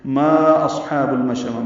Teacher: ما کو 4 حرکات لمبا کرنا ہے، مد منفصل ہے۔ اصحاب المشأمہ، باقی قواعد اسی طرح ہیں، شین ساکن پہ ہمس ہے، اور آخر میں تائے مربوطہ پہ وقفاً ہا میں ہم نے تبدیل کیا ہے اس کو، ما اصحاب المشأمہ، اس کی زیر ختم کر دی ہے، وقفاً ہا میں تبدیل کیا ہے۔